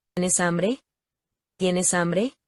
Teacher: Por ejemplo, preguntas de sí o no, pregunta cerrada. ¿Tienes hambre? Va a subir al final.